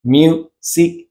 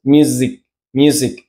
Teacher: tenemos que hacer el sonido de la z inglesa que es una Z con una pequeña vibración